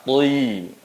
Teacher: Angkat pangkal lidah untuk tebal huruf to-nya. Turunkan rahang untuk sempurna harokat kasrohnya. Hanya sempurna saja menurunkan rahang, namun tidak diangkat pangkal lidahnya, pasti akan menjadi seperti huruf ta.